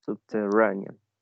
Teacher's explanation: stress is placed in the third syllable